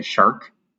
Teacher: the American accent puts a little bit more emphasis on the R